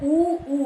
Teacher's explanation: होंठ जो है इसमें गोल हो रहे हैं, यानी कि प्रयोग ओष्ठ का हो रहा है